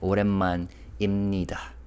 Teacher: Consonants ing, vowel 이, 받침 비읍 b. But in this phrase, the B sound is not really pronounced, which is why I wrote IM as the romanization, because it sounds like 오랜만입니다.